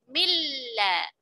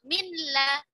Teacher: Dua huruf kemudian akhirnya diidghamkan, di mana huruf yang sukunnya dileburkan ke huruf yang kedua yang berharokat yaitu lam